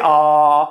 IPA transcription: ɑ